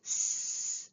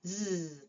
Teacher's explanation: In a lot of speech sounds, we have cognate pairs which are two phone names that are produced with the same manner in the same place but differ in voicing. An example of that is S and Z.